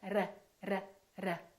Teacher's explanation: That's called a rolling R. That sounds like a foreign accent to American speakers.